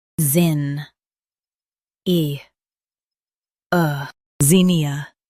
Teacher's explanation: Zin, E, ZINNIA. Emphasize zin and soften ia.